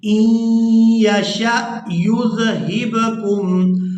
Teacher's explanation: شین کو حمزہ ساکن کے ساتھ ملائیں گے تو جھٹکے کے ساتھ ادا کریں گے